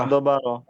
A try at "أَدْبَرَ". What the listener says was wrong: আদ বারা বললে তো আর কলকলা হইলো না।